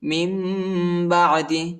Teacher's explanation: نون کے بعد با آیا ہے، ادھر ہم آخر میں میم کی آواز نکالیں گے اور اخفا بھی ہے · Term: اقلاب